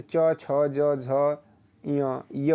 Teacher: च वर्ग का जितने भी वर्ण आते हैं वह सभी जो है तालु से बोले जाते हैं।